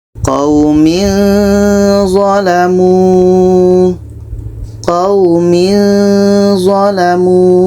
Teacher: Ketika kita sebut tanwin, kita sudah merasakan za. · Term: ikhfa hakiki